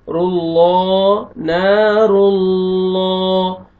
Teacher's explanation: میں لام ہے اس سے پہلے زبر اور پیش آئے گا تو لام کو موٹا کر کے پڑھیں گے پر کر کے پڑھیں گے